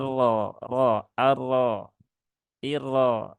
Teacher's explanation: dibaca dengan tebal yaitu dengan menaikkan pangkal lidah